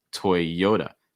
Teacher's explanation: toy yoda stressing that second syllable the yo toyota notice that that t takes on a fast d sound so it's not it's usually more duh toy yoda toy yoda